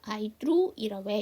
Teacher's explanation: T 사운드 이쪽으로 연음하면서 약화